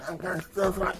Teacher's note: I gave him the voice it's kind of muffled because of the things in his mouth